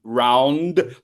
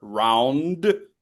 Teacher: Would you please make sure to hit the N, round, the N and then the D, round. Lengthen that sound a little bit longer.